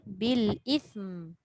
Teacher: Wah, tak ada pun mim sabdu kat situ. Tapi walaupun dia mim mati, dia kena kekalkan sifat semula jadi gunnah yang ada pada mim.